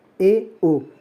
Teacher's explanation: संवृत स्थिति से कुछ अधिक खुलता है अर्थात मुख आधे से कम खुलता है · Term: अर्ध संवृत